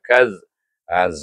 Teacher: tebal bunyinya dan angkat pangkal lidah sebab tu di jadi tebal dan kembang pangkal lidah itu